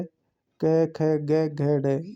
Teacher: पहला, तीसरा और पांचवा ये अलप्राण कहलाते हैं, और दूसरा और चौथा जो वर्ण होता है वो महाप्राण कहलाता है।